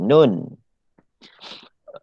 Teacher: Tapi kalau nun tidak ada tanda sabdu, dia berasal daripada lidah ataupun al-lisan. Sebab ketika kita sebut nun, lidah kita kena berada di atas ataupun di langit-langit, menyentuh langit-langit bahagian atas.